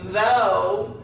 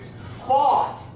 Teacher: changes the long o to actually an aw sound